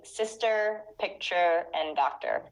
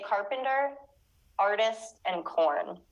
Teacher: here the r occurs at the end of the word so in the american accent they normally pronounce it but in the british accent they don't